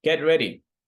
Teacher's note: the intonation falls in the end